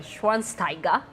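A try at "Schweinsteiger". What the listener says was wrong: Don't skip the W. It becomes a V.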